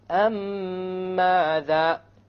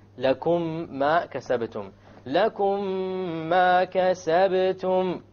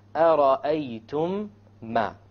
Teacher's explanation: You merge it together and you have a ghunna. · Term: idgham shafawi